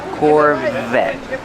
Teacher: Pronounce the V with voice.